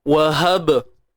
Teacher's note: Ni ha simpul, jangan pedaskanlah. Ni ha yang duduk di pangkal kerongkong kita.